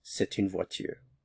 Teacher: One other thing that I didn't mention is normally you don't pronounce the T in a, c'est. Since a vowel follows, there's liaison here. So you'll hear the T sound when a vowel falls.